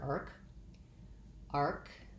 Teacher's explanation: thinking about the tongue being a little bit forward and then lifting into the tighter r